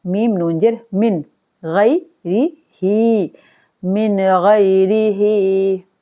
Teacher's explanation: نون ساکن کے بعد آ گیا غین حروف ہلکی میں سے تو ہم یہاں پر نون کو اظہار کر کے پڑھیں گے